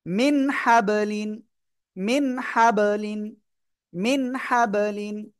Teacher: মিন গুণনা করা যাবে না, কেন? নুন সাকিনের পরে ওই ছয় বাই হামজা আইন হা গয়েন খ, ওই যে ছয়টা অক্ষর একটা আসছে এই জন্য। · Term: স্পষ্ট করে